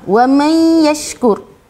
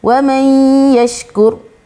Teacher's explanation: Idgham ma'al gunnah, wa man yashkur. Nun mati bertemu dengan ya. So kita kena memasukkan dengan dengung.